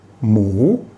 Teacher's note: rule for this word actually has a higher class initial consonant it's a live syllable and therefore it has a rising tone